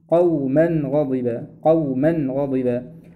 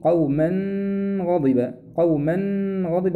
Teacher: من الأحكام الجديدة معنا في هذه الآية قوله قوما غضبا قوما غضبا، فكلمة قوما آخرها تنوين، وبعد هذا التنوين حرف الغين، وإذا وقع بعد التنوين حرف الغين فإن التنوين هنا حكمه الإظهار، ما ينفعش أغن، لابد أن أظهر، أقول قوما غضبا قوما غضبا.